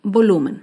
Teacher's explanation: el volumen se acentúa en la penúltima sílaba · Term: palabra grave